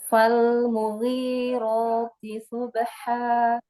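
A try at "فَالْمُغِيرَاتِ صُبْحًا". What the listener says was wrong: Huruf shad, angkat lagi pangkal lidahnya, jangan seperti huruf sin, karena memang makhrajnya sama, huruf shad dengan huruf sin sama. Yang membedakan adalah sifatul hurufnya, ya, maka dibedakan. Itu guna sifatul huruf.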